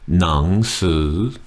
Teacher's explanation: The final word, nang su, two rising tones.